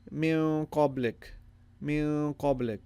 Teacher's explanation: The noon has a sukoon on it and it's prolonged.